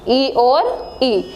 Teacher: जो स्वर तालु से बोले जाते हैं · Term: तालव्य स्वर